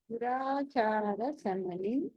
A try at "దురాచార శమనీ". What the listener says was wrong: శమని దురాచార శమని నీ దీర్ఘం ఉంది. దురాచార శమని శమని శమని